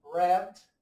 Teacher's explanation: A letra E, o som do é aberto, por exemplo, red.